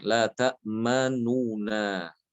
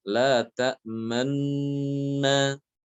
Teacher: Jadi nun yang pertama diidghamkan ke nun yang kedua sambil disertai dengan dengung ya. Dan juga disertai dengan memoncongnya bibir ke depan, memberikan isyarat bahwa harokatnya adalah dhammah. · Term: ismam